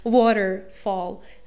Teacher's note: the last syllable, even though it's of course quite sharp, it's actually not accented, it's waterfall and not waterfall. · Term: falling rhythm